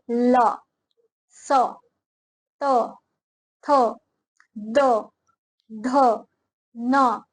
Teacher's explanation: जीभ दांतों को स्पर्श करती है उनका उच्चारण स्थान दांत होने से वह दंत्य वर्ण कहलाते हैं, यानी कि जब जीभ दांतों को स्पर्श करती है, टच करती है और जो आवाज निकलती है, जो ध्वनि निकलती है बोलने पर, उसे क्या बोलते हैं?